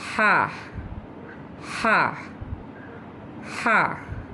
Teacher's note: from the middle of the throat